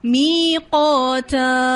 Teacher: میقا، یہ الف موٹا ہے اور تا کا الف باریک ہے